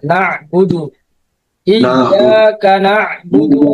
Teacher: এই যে বুদুর মধ্যে অনেকে টান দিয়ে দেন, এখানে কোনো টান হবে না।